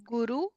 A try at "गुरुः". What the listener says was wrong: Ucharanam. Guru is not there. Guruhu.